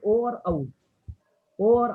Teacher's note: ओ और औ का स्थान क्या है? कंठ और ओष्ठ।